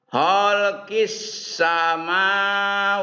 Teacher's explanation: Ma-nya panjang, wawnya panjang. Ini mad.